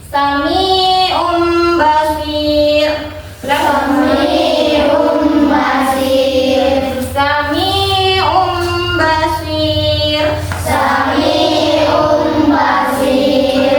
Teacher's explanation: Huruf mim mati dan disertai dengung. Jadi dari yang bacanya nun sukun atau tanwin menjadi bunyi huruf mim. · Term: Iqra